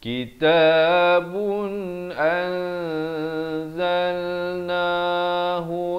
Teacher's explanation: Kadar panjang 2 harakat. Daripada an jadi disamarkan. Nak kata nun pun tidak, zai pun tidak, dengan kadar 2 harakat. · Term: ikhfa hakiki